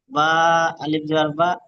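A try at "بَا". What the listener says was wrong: হচ্ছে না? আপনি ওখানে বললেন যে একালিপ টান দিয়ে পড়তে হয়, তো টান দিচ্ছেন না। আরো টান দিতে হবে, হয়নি, একালিপ হয়নি। ওটা বা, ওটা অক্ষরের টান, কিন্তু যে মাদ্দার টান ওটা হয়নি।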